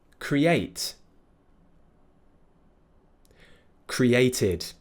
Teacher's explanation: it ends with a T sound so it will be ID